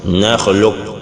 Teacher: Mais si on prononce un peu qafun d'une autre manière, ça applique le qalqala, ça veut dire que qafun, on n'a pas prononcé en réalité. Lorsqu'on dit nakhluq, on bloque de l'air comme si on voulait dire qa, mais on ne le dit pas finalement. Nakhluq avant de dire kum. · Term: idgham partiel